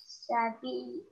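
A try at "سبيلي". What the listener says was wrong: Good. Once more.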